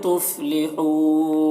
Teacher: تفلحون یہاں پر واو مدہ ہے اور نون کا زبر سکون سے بدل جائے گا وقفی کی صورت میں، تو اس وقفی ہوگا، تو اس کو اس طریقے سے پڑھیں گے.